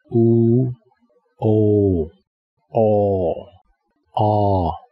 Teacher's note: you can see that these four vowels have rounded lips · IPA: u o ɔ ɒ